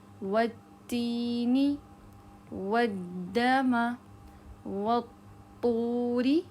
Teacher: واو کو ڈائریکٹلی آپ نے جو زبان کی نوک سے ادا ہونے والے حروف ہے جیسے تا دال اور طا اس سے ملائیں گے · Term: شمسی حروف